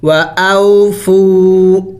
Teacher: پہلے اگر پیش ہو تو اسے واو مدہ کہلاتا ہے، اور واو مدہ کو ایک الف کے مقدار لمبا کرنا ہوتا ہے۔